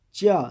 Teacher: तो चा देखा, जब बोलते हैं तो जीभ जो है वो ऊपर लगती है तलवे पे, जिसको बोलते हैं तालु